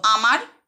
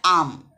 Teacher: যেমন দেখো, 2টি শব্দ আমার আর একটা আম, দুটোর ক্ষেত্রে শব্দটি শুরু হচ্ছে আ দিয়ে, কিন্তু আমার শব্দের আ ধ্বনির চেয়ে আম শব্দের আ ধ্বনির উচ্চারণ দীর্ঘ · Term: দৈর্ঘ্য